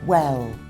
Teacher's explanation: you should see your lips go round at the start of well.